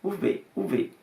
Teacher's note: os valencianos e mallorquinos, eles hablan más con una expresión labio dental